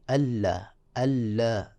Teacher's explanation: ادغام ہو رہا ہے، ان لا نہیں پڑھنا بلکہ اللہ